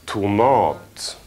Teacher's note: Betoning på den andra stavelsen